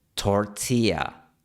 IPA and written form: toɹ'ti.a (tortilla)